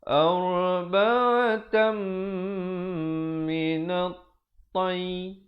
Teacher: di situ idgham bi gunnah, masuk dengan dengung